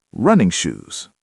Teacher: Here, running doesn't describe the shoes. They're shoes for running, so the stress goes on running.